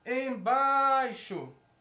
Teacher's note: Quando a gente vai a palavra embaixo, a única sílaba tônica que a gente vê aqui é bai